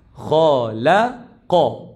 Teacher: Huruf tebal. Kha. La nipis. Qa tebal balik.